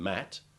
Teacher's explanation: the sound of m is another labial produced by pressing your lips tightly together and inwards and then bursting them out